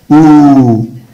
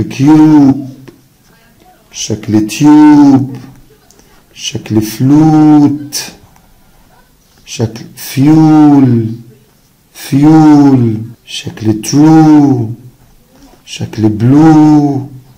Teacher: طيب صوت اللونج يو، قال لي لا صوت اللونج يو او، شفايفي مضمومة وفي نفس الوقت بمد فيها